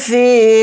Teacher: فا کے ساتھ یا مدہ ہے، فا زیر فی کو تھوڑا کھینچ کر پڑھیں گے، ایک الف کی مقدار